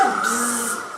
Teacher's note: a buzzing sound which is created by the vibration of vocal folds